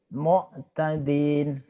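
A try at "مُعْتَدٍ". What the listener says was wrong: Kayak keselak Pak. Tapi jangan ke hidung. Jangan ke hidung, ke bawah. Ke tenggorokan. Mu'tadin.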